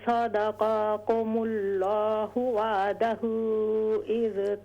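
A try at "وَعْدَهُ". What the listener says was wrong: वा आइन क्लियर कीजिए, वअदहू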